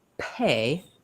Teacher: So if I'm trying to say pill, or for example, pay versus bay, if I say bay, I feel maybe a tiny bit of air come out. When I say pay, you can hear there's a burst of air that comes out.